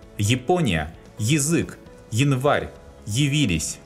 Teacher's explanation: At the beginning of the root, unstressed ya is pronounced as yi.